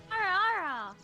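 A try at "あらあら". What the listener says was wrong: You sound like ala like the dog.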